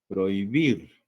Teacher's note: cuando encontramos una H entre dos vocales, pues hay que tomar en cuenta como que si la H no existiese y se produce lo que es concurrencia vocálica